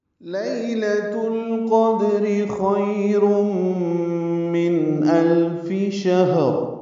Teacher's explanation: لیلۃ القدر یا لین ہے، لام کو جلدی پڑھنا ہے، تاء کو القدر کی لام سے ملانا ہے، قاف پر دال ساکن پہ قلقلہ را باریک. خیر میں خا پر ہے اور یہ یا لین ہے، یا ساکن سے پہلے خا پر زبر آنے کی وجہ سے یا لین بنی ہے، را پر پڑھیں گے.